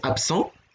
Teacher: Enfin, quand on étudie un peu les règles de phonotactique, c'est que vous ne pouvez pas avoir une consonne voisée, donc qui fait vibrer les cordes vocales comme B, et une consonne dévoisée, donc qui ne fait pas vibrer les cordes vocales comme S